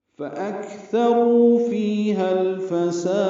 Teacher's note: لام ساکن پہ اظہار، اب سین کو لمبا کریں گے اور دال ساکن پہ قلقلہ کریں گے کیونکہ وقف کر رہے ہیں